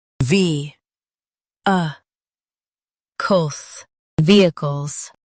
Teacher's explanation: Stress ve and keep cols quick.